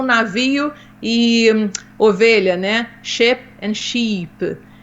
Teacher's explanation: a gente não tem o som longo, né, a gente acaba falando tudo chip. Ou cheap, ou a gente acaba exagerando.